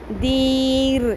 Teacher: رو کی تھرتھراہٹ کے ساتھ باریک رکھنا ہے اس کو